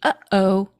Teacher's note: Whenever you have a glottal stop, it's like a catch in your throat, like between uh-oh